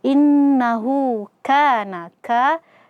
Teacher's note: Di sini ada huruf ka yang fathah berjumpa dengan alif. Maka di sini ada mad asli dibaca dua harakat saja.